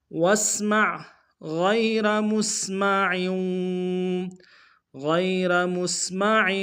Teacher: غیر میں غین کو یا کے سامنے لائیں گے، یا لین بغیر کھینچے پڑیں گے، را کو موٹا ادا کریں گے، میم کو سین کے سامنے لانا، سین کی صدی باریک ہوگی، عین کی جو تنوین ہے تنوین کو آگے واو کے سامنے لائیں گے۔